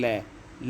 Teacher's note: जब वायु जो है मुख से निकलेगी तो जीवा जो आती है उसके बगल से निकलती है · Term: पार्सी व्यंजन